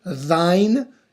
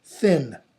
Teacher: The one is voiced, the other is unvoiced, or they're also called rough and smooth.